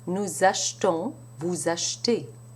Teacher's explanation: that E is a mute E and it drops completely when surrounded by two pronounced consonants